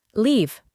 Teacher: De nuevo, la E del final no se pronuncia, y el conjunto de letras EA se pronuncia con el sonido largo de I